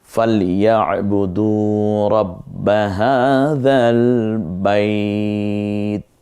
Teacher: বাইত জবরের পরে ইয়া হলে তো টান দেওয়ার কথা ছিল না, কিন্তু আমরা এখানে 1 আলিফ টেনে বলছি, কারণ এটা ওয়াকফর জায়গা, এজন্য এটাকে মাদ্দে লিন বলে।